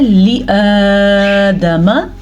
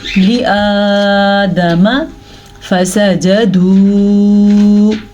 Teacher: یہاں پہ مد پیدا ہو رہی ہے اور اس مد کی مقدار ہے 2.5 سے 3 حرکات عربیہ